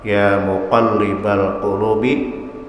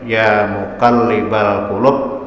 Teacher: Qaf besar itu letaknya makhrajnya di pangkal lidah. Di pangkal lidah itulah keluarnya qaf, termasuk huruf isti'la.